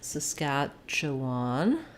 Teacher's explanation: we have stresses on the scatch syllable